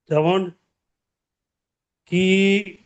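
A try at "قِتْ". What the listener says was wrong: টান দেওয়া যাবে না, যেমন কিত। কিত।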